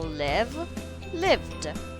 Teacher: V is a voiced sound, so we add the d sound. · verbs that end in a voiced sound, your throat vibrates when you make the sound, we add the d sound, and there is no extra syllable